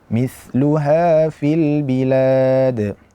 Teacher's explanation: Huruf tha perlu kita perhatikan, jangan sampai kita terjadi kesalahan mendatangkan huruf tha dalam keadaan dia itu huruf sin, Yang benar adalah bukan mis. Karena tha makhrajnya adalah ujung lidah bertemu dengan gigi seri bagian ujung, dengan ujung lidah dengan ujung gigi atas.